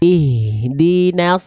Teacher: Ha besar Bunda. Dari pangkat tenggorokan.